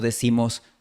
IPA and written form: ma'ðu.ɹoʊ (Maduro)